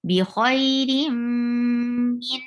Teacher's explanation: Idgham bagunna. You are holding the sound in your nose.